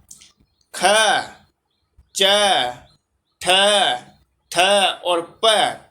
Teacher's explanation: श्वास है, अघोष है, लेकिन महाप्राण है।